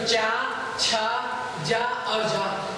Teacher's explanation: च वर्ग का उच्चारण स्थान तालु